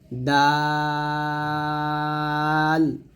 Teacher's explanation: দাল জিহ্বার আগা সামনের উপরে দুই দাঁতের গোড়ার সঙ্গে লাগবে